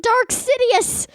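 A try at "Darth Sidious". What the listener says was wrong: Darth. There's a TH.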